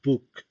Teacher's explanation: podemos observar claramente cómo los labios se juntan para producir el sonido